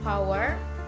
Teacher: power is a bilabial voiceless stop consonant